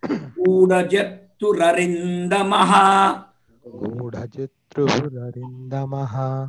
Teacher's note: If you read together, club together, because of Sandhi, that R sound will come. Ru sound will come.